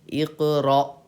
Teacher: حمزہ ساکنہ کے پڑھنے میں جھٹکا ہوتا ہے. اسی وجہ سے ہم پڑھیں گے را حمزہ زبر را.